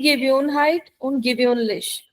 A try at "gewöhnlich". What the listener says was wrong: Ek minute, your pronunciation is wrong. Gewohnheit is correct, but the adjective, yeah, but the adjective has an umlaut. Gewohnheit und gewöhnlich. Ü.